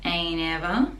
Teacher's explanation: t is soft connecting together